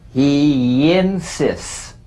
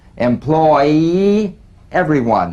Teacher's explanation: Linking words that end in the Y buzz. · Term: The Y link